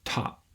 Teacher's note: there is a little puff of air that comes through my vocal folds after the t and top that should blow out the match but because there's no puff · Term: aspiration